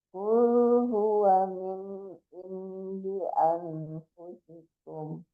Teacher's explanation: wa-nya juga nggak boleh tertahan, nggak panjang wa-nya.